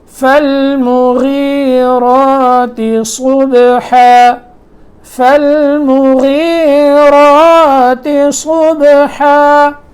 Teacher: غین جو ہے یہ موٹے حروف میں سے ہے، لیکن جب غین کے نیچے زیر آ جائے تو اس کی موٹائی میں تھوڑا فرق آ جاتا ہے